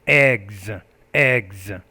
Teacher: that s is going to sound like a z when it comes after a voiced consonant like a g